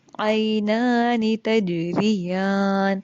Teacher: جم کے اوپر ساکن ہے تو کلکلا ہوگا.